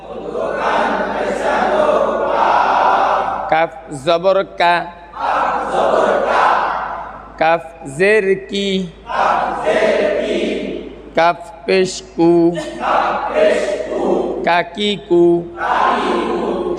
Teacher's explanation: তাহলে 5 নম্বর মাখরাজ, জিহ্বার গোড়া থেকে একটু আগে বাড়িয়ে, মধ্যখান পেঁচানো কাফ।